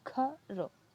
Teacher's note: अब जो हम घर बोल रहे हैं तो हमारे कंठ से आवाज आ रही है